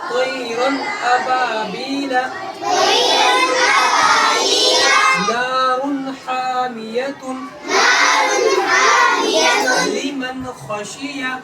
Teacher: اظہار حقیقی کہا جائے گا، یعنی نون ساکن کی آواز کو یا تنوین کی آواز کو جلدی ظاہر کر کے پڑھیں گے، آواز نہیں روکیں گے